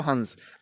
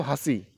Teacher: हंसी में क्या हो रहा है, मुख ज़्यादा खुल रहा है, नाक कम, नाक से कम बोले, तो जब नाक से कम बोले, मुख से ज़्यादा आ रहा है, तो उसे क्या बोलते हैं, अनुनासिक।